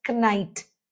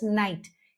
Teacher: we do not produce the K sound in the word when it is at the beginning of a word and is immediately followed by N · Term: silent K